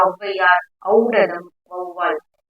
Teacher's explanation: ரெண்டு மாத்திரையில இருந்து ஒன்றரை மாத்திரையா ஒலிக்குது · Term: அவகார குறுக்கம்